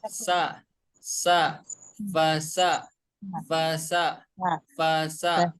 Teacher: Huruf sin tempat keluarnya dari ujung lidah, maaf ya, menempel ke ujung gigi seri yang bawah.